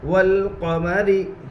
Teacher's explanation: لام کے اوپر جزم ہے, جزم والے حرف کو پیچھے والے حرف سے ملا کر پڑھتے ہیں. لام میں قلقلہ نہ ہوگا اس لیے کہ لام قلقلہ کے 5 حروف میں سے نہیں ہے. · را کے نیچے زیر ہے اس لیے را باریک ہوگی. والقمری. واو کے اوپر زبر ہے, زبر کو جلدی پڑھے تھوڑا بھی نہ کھینچے. · والقمری. واو کے اوپر زبر ہے, زبر کو جلدی پڑھے تھوڑا بھی نہ کھینچے. الف لام تعریف کے بعد حروف قمری کے 14 حروف میں سے قاف ہے, اس لیے الف کو نہ پڑھیں گے, صرف لام کو پڑھیں گے.